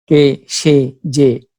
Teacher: একাক্ষর সর্বনাম পদের এ সংবৃত হয়।